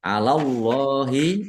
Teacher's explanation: Attaquuna qof dzumah wawu sukun lamah wawu sukun ini dua-duanya mad thobi'i dibaca panjang dua harakat. Alallahi Allahnya dibaca tebal karena harakat di depannya fathah